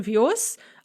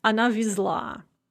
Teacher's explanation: the z is pronounced as sa in the masculine form because it is at the end of the word. We have that word final devoicing, so on vios.